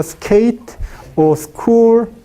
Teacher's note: schol o o t no hay aspiración por tanto en inglés en caso de inglés se pronuncia sin aspiración después de la consonante S como skate